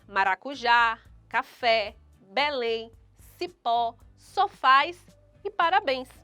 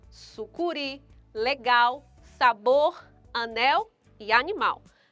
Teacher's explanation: Porque a sílaba tônica, a sílaba mais forte destas palavras, encontram-se na última sílaba. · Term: oxítonas